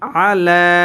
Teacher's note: লামের উপরে খারা জবর আসার কারণে এই লাম এক আলিফ টান হবে